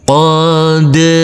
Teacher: Jangan lupa huruf dal harus kita pantulkan karena ini adalah bacaan qalqalah.